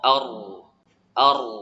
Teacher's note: ujung lidah dengan langit-langit tertutup rapat namun tidak sempurna disebabkan huruf ro sifatnya bergetar. Jadi celah terbuka kemudian tertutup, terbuka tertutup disebabkan getaran di ujung lidah pada huruf ro, ar.